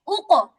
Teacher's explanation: কফ ও ত এর কলকলা জবরের কাছাকাছি